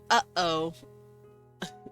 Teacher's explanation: the glottal stop glottal stop that's the sound you get when you say uh oh it's that little catch